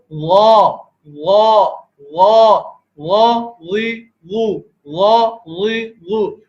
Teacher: اور غا کے اندر دیکھیں غا کے اندر حرف جو ہے وہ موٹا پڑا جاتا ہے تو حلق ٹنگ، حلق یہاں پر تنگ ہو جایا کرتا ہے اور زبان میں معمولی سا کرو لے کے آتے ہیں